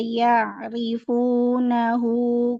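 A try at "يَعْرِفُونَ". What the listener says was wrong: Tipisin lagi boleh? Huruf ro-nya rifuna.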